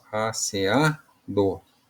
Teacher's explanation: Sílaba mais forte, então a penúltima sílaba paroxítona